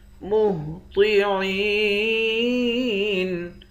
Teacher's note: عین کو یا کے ساتھ ملا کر یا کو ایک الف کے مقدار کھینچیں گے، آخر میں نون ساکن ہے۔